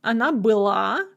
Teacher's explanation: the feminine ending is going to be stressed, and then all the other forms will have a stress on the stem. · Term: stress shift